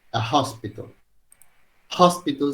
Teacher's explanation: Hospital sí empieza con un sonido que si bien nosotros no lo utilizamos en inglés sí existe, que es un sonido que uno hace con la glotis, ¿sí? Que es como una especie de J pero muy suave, es como una exhalación